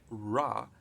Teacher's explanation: in english you have this er sound ra it's called retroflex r